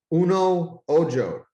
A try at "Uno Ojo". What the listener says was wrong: It's actually Uno Ojo. Uno Ojo. The J is pronounced like an H. So Uno Ojo.